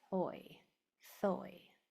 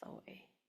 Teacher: So if you can't hear that first sound, my tongue is going between my teeth and I'm blowing